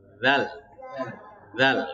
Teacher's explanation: Dzal, ujung lidahnya keluar. Jangan malas untuk mengeluarkan ujung lidahnya.